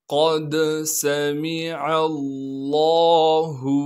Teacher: قاف کو موٹا کر کے پڑھنا ہے کیونکہ قاف موٹے حروف میں سے ہے۔ پھر قاف کو آگے دال ساکن سے ملائیں گے کیونکہ دال ساکن ہے۔ · دال پر ساکن ہونے کی وجہ سے قلقلہ کریں گے، یعنی آواز کو ہلائیں گے۔ سین کی سیٹی کو صاف کر کے ادا کریں گے۔